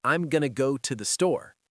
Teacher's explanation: Going to becomes gonna. To becomes ta. The words are still there, but they're reduced. That's why it sounds fast. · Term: reductions